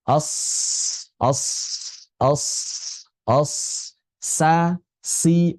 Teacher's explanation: safir ya, menghasilkan desis yang kuat yang keluar dari makhrajnya.